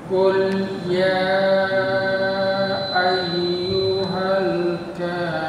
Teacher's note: Kurang panjang Pak ya, minimal 4 harokat.